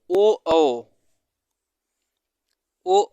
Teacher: दोनों से इसका उच्चारण होता है साथ में और ओ औ ओ औ का उच्चारण स्थान है कंठ प्लस ओष